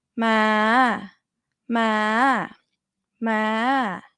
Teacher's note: you have to start quite high as middle tone. If you start low, it's gonna come out as rising. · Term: high tone